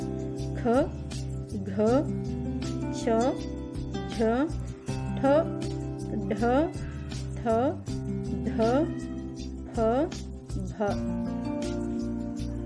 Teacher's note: ಮಹಾಪ್ರಾಣ ಅಕ್ಷರಗಳನ್ನು ನಾವು ಹೆಚ್ಚು ಉಸಿರಿನಿಂದ ಉಚ್ಚಾರ ಮಾಡಲಾಗುತ್ತದೆ